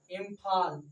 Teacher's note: इम्फाल बोलिएगा तो देखिए नाक से हवा निकलता है